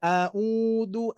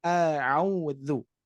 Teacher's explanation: A'udzu huruf dza Yang mana pernah saya sampaikan bagi Bapak Ibu sekalian yang sudah ikut bergabung ataupun asatid yang sampaikan, huruf dzal ya, khususnya huruf dzal ini ujung lidah menempel ke gigi seri atas